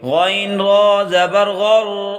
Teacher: غین کو موٹا کر کے پڑھیں گے اور را کو بھی موٹا کر کے پڑھیں گے